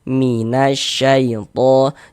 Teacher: Jadi, huruf huruf alif lamnya ini dia enggak dibaca. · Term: alif lam syamsiyah, alif lam syamsiah